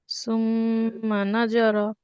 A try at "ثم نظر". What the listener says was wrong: জ পাতলা হবে। জ হবে না আপু, জিহ্বাটা হালকা একটু বের করে দিবেন। আমি বারবার বলছি নরম হরফ গুলা, প্রত্যেককে বলতেছি নরম হরফগুলো উচ্চারণের সময় আপনার জিহ্বাটা হালকা একটু বের করে দিবেন, তাহলে হরফের উচ্চারণটা একবারে পারফেক্ট হবে, একবারে নরম হবে।